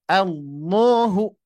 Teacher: Contoh, ketika kondisi huruf lam ini di lafadz Allah atau lafdzul zalalah tabkhim gitu ya. Maka dari itu huruf lam ini menjadi tebal.